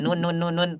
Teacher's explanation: ujung lidah mengarah ke langit-langit bagian depan ya seperti itu yang dekat dengan gusi gigi seri atas ya itu Nun